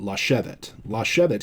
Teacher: chevit is accented on the shin syllable